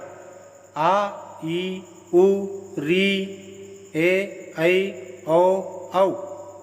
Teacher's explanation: जिन स्वरों का उच्चारण करने में ह्रस्व स्वर से दुगना समय लगता है उन्हें दीर्घ स्वर कहते हैं